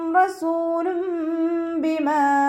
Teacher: തെൻവീനിനുള്ള നൂനിനെ നമ്മൾ മീമാക്കി മാറ്റിമറിച്ച് ഒന്നയോടുകൂടി ഓതിക്കൊടുക്കുക കേട്ടോ. നൂനിൻ്റെ സൗണ്ട് അവിടെ കേൾക്കേ ഇല്ല. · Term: ഇഖ്ലാബിൻ്റെ